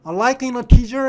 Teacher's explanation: 지금 이게 in하고 더는 강세가 없으니까 그냥 like하고 붙어버렸어요.